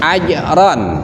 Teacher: huruf jim ketika disukunkan juga, maka cara pembacaannya harus dikolkolahkan, yaitu dipantulkan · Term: qalqalah